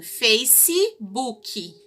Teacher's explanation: Nós acrescentamos esse I tanto no face quanto no book. Então, a gente fala assim, Facebook.